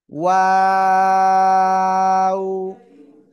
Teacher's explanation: দুই ঠোঁট গোল করব, গোল করে শুরুতে গোল হবে, মাঝখানে দুই দিকে চলে যাবে, আবার শেষে এসে গোল হবে